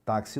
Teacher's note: você vai ouvir o som do k vai ouvir o som do S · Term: som de KS